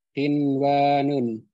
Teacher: Nah, Dibaca Idhar ya. nah, pada kata qinwanun itu tidak boleh dibaca idgham bi gunnah, walaupun secara pengertiannya itu bisa masuk daripada pengertian idgham bi gunnah.